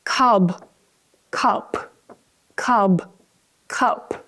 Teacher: Notice the paper's moving more when I say the p, the voiceless sound.